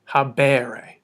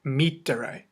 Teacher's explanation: In the second conjugation, it's ending in a long ERE, habere. In the third conjugation, it's ending with a short ERE